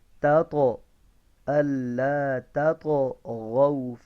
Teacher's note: اللہ تطغوا، یہ تا نہیں ہے یہ طا ہے، ٹھیک ہے، تو تطغوا، ایک تو یہ طا ہے، دوسرا ساکن ہے تو حروف قلقلہ میں سے ہے، اس کے اندر آواز کو جاری رکھیں گے